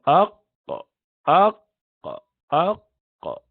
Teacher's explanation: the base of the tongue, when you lift it up to the soft palate, which is the part of the roof, and you pronounce the letter qaf